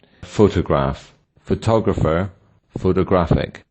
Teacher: photograph has the stress on the first syllable, photographer on the second, and photographic on the third